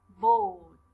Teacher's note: الR أصلا لا تلفظ في نهاية الكلمات بهاي اللهجة اللي إحنا بندرس فيها